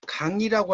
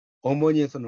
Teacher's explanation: 우리가 강이라고 할 때 이응은 음가가 있는데 이 어머니에서는 음가가 없죠